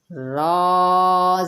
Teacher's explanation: زبان کی نوک جب اوپر سامنے والے 4 دانتوں کی سوڑوں کو لگے گی تو را ادا ہوگا